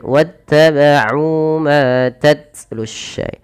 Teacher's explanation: Di sini tidak dibaca wa uttaba'u tapi langsung kata wattaba'u. Hati-hati ain jangan sampai terubah dengan hamzah